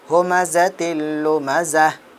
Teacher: اوپر ہم سانس توڑ دیتے ہیں تو یہ گول تا ہا کے اندر تبدیل ہو جائے گا، کنورٹ ہو جائے گا۔